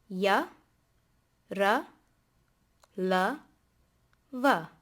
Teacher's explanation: And this ra is different from the rolled R sound that we encountered while we were learning the vowels. This is not a rolled R sound.